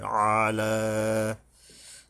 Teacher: আইন গলা চেপে উচ্চারণ হবে এবং লামের উপর একালিপ টানতে হবে।